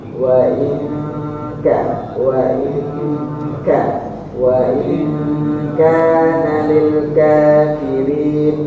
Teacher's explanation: Wa in nanti ketemu kafir disamarkan nunnya.